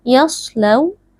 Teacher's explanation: ini merupakan bacaan lin, waw sukunnya dibaca dengan lunak